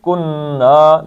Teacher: نون کو 2 حرکتیں کھینچ دینا ہے